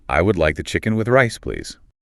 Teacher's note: The I and the would often blend together slightly, and the would and like connect smoothly.